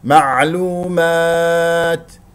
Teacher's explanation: نقف على تا ساكنه مهموسه فيها همس لطيف لا تبالغ فيه